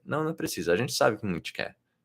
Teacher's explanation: So the way she said gente twice was heavily reduced.